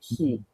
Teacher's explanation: you can probably feel the he is being made closer to your teeth.